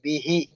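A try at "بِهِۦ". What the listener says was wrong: దీర్ఘం తీయాలి. హీ. ఆ, హా కింద కసరా ఉండి తర్వాత యా సగీరా వచ్చింది కాబట్టి खड़ा जेर है तो खींचते हैं हम, वैसा 2 हरकत दीर्घ खींचना.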